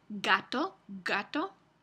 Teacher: Y algo similar pasa con la G. Existe una realización oclusiva, principio de palabra